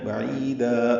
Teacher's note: لمبا کرنا ہے، بعیدا، عین وسط حلق سے ادا کریں گے، عی یا مدہ ہے اور دا الف مدہ مد عوض بنے گا